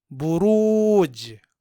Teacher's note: یہاں حرف جیم میں قلقلہ ہوگا کیونکہ جیم حرف مقلقل ہے اور یہاں یہ ساکن ہے.